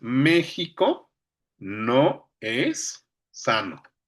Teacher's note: consiste en romper la sinalefa para mantener dos vocales contiguas, una al final de la palabra y otra al inicio de la siguiente, en sílabas gramaticales distintas. Es lo contrario a la sinalefa, utilizando para ajustar el conteo silábico en un verso o enfatizar el ritmo. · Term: hiato